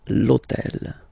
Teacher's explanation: All right, and third example, so I took on purpose this hôtel, okay, because it starts with H, but remember that in French we don't pronounce H, okay, so basically the first sound of the word is the vowel O